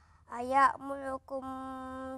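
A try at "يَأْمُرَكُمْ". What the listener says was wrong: Walaupun ada kalanya kita tidak fasih menyebut huruf R ataupun Ra, tetapi cuba untuk tebalkan. Sebagai contoh, jangan sebut wala ya'murakum muru. Semua wala ya'murukum semua.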